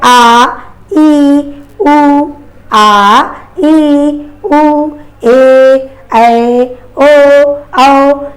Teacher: तो इनके उच्चारण में जस्ट 2 गुना समय लग रहा है, और इसीलिए हम सभी लोग इनको द्विमात्रिक ध्वनियाँ भी कहते हैं